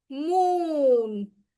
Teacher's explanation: So the oo is stretching in when we say moon. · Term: long oo